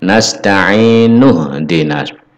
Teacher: Jadi untuk wasol ini bunyi ih pada hamzah ini harus dihilangkan. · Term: hamzah wasol